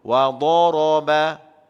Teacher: Da tebal, ra tebal, ba lembut. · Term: bunyi tebal